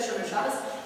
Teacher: Shabbat is with the Tav going to an S sound, and the accent is on the first syllable, not the last syllable.